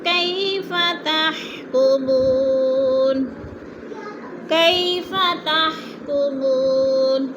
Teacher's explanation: کئی پہ یا لین ہے، لمبا بھی نہیں کرنا اور جھٹکا بھی نہیں دینا۔